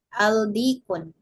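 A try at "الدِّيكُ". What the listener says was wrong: Nah, di sini al kemudian huruf ini huruf samsiyah ya. Maka alnya tidak dibaca dan di akhir hilang tanwin. Adiko. Ini mungkin di kata adiku tadi ya. Ibu jadi dal, huruf dal itu termasuk huruf syamsiyah. Sehingga ketika ada al di depannya, maka al tidak dibaca. Ya, ini menjadi adiku.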